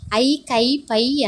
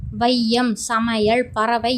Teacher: வையம், சமையல், பறவை என சொற்களில் முதல், இடை, இறுதி ஆகிய இடங்களில் வரும்போது தனக்குரிய 2 மாத்திரை அளவிலிருந்து குறைந்து ஒலிக்கிறது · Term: ஐகாரக் குறுக்கம்